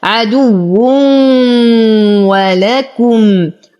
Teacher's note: تنوين وبعده الواو فالحكم إدغام بغنة